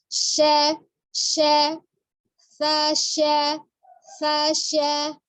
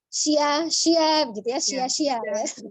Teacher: bunyi sya itu juga masih dari al-lisan, bukan safatain ya, bukan dari bibir tapi dari lidah. Jadi tengah lidah yang bertemu dengan langit-langit bagian tengah.